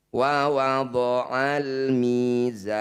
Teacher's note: awalnya ketika dihentikan karena di akhir ayat maka Ma thaabii ini kita panjangkan enam harakat huruf yang terakhir sukunkan · Panjangkan za 6 harokat, sukunkan huruf yang terakhir. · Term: mad arid disukun